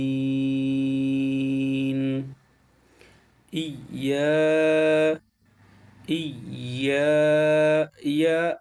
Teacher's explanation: মাখরাজটা জিহ্বার মধ্যখান থেকে তার বরাবর উপরে তালের সঙ্গে লাগবে